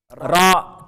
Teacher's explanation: tip and bottom of the tongue when it touches the gums of the upper central and lateral incisors.